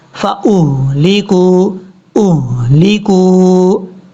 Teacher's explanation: یہ ہا بھاری ساؤنڈ کے ساتھ پڑھا جائے گا، اس کو بریک نہیں پڑھنا